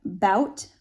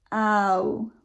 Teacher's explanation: here you have bout, like about, and that's an ah or an ah, moving to an oo. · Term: diphthong